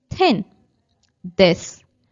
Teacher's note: our tongue is touching our teeth, and that is called dental sounds.